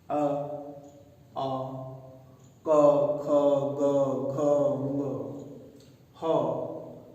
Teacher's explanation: इन सब का उच्चारण स्थान कहां से होता है? कंठ से होता है, गले से होता है।